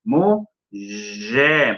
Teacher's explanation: el sonido cerrado anterior hace que el sonido vocálico posterior cierre también. ¿Lo ven? De lo contrario, deberíamos de decir mujom. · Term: vocalismo